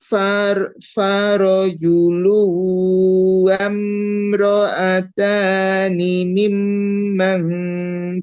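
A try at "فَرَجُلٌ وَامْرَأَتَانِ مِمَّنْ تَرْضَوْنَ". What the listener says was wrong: Ah, mimnya, mimnya kurang ditahan. Mim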